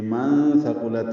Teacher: نون کی آواز چھپائیں گے، ثا کو نرمی سے پڑھیں گے، قاف پر پڑھیں گے، لام کو تا سے ملانا ہے